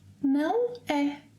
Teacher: is used at the end of a statement with a rising intonation when seeking for an agreement, and often shortened to 'né?' 'This place is beautiful, isn't it?' Some cities may also have their names shortened.